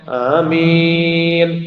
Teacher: ആമീനിലെ ആ കൂടുതൽ നീട്ടേണ്ട മീമിന് ശബ്ദം ഒരല്പവും നൽകേണ്ട അതുപോലെ ആമീൻ മീമിന് ശബ്ദില്ല നോർമലി മീൻ ആമീൻ മീ മീ ചിലപ്പോൾ പറഞ്ഞാൽ